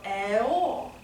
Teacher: it's gonna sound very open, and your lips are gonna be very far apart. We're not gonna keep them puckered. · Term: open O